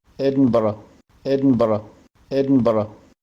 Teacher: In England, you'll usually hear Edinburgh, Edinburgh. But in Scottish accents, R can be pronounced with a tap of the tongue